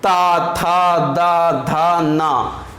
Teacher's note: इनको उच्चारित करते समय हमारे जो दांतों में हमारी जीभ जरूर टच होगी। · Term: दंतब्य